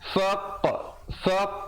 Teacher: ada pantulan di situ dan dibulatkan mulut untuk menghasilkan bunyi qa itu. Bukan kita buat-buat, dia terjadi sendiri bila kita lepaskan genggaman huruf qaf.